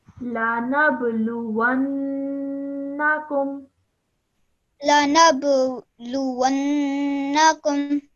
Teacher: So we are only holding that nasal sound in our nose for 2 seconds. Apart from that, this only has a fatha on it, so we don't stretch the letter out for longer than 1 second. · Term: noon gunna